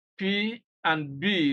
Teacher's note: the articulation of P for example involves the upper and lower lips coming together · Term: bilabial consonant sounds